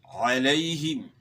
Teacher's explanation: عین کو گلے کے درمیان سے. یا کا مخرج جو ہے زبان کا درمیان اور اوپر کے تالو سے ہے، یعنی یا کی ادائیگی میں زبان کا درمیان اوپر کے تالو کے ساتھ لگے گا.